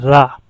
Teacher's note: लुंठित इसलिए होता है कि जीभ का अग्रभाग बोलने में, इसको बोलने में, उच्चारण में या बोलने में जीभ का अग्रभाग कंपित होता है